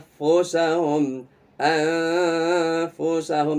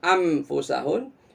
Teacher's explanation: Jadi bunyi nunnya samar. Dalam bahasa Arab namanya khafi ya, samar atau tersembunyi.